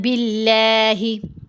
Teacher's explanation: لفظ اللہ کی لام کو باریک پڑھنے، با کے نیچے زیر آ رہی ہے